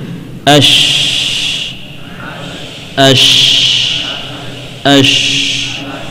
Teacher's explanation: shin bagian tengah dinaikkan, masih tersisa celah, ya, tidak sampai berbenturan · Ash, ash, ash. Nah, baik, letaknya, ya, di belakang sedikit dari makhraj jim